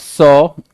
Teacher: For the sound saw, air from the lungs continuously through the mouth, but the tongue is raised sufficiently close to alveolar ridge, the section of the upper jaw containing the tooth sockets, to cause friction as it partially blocks the air that passes